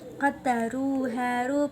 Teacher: haru bacaan mad tabi'i sebab dhammah diikuti wawu sukun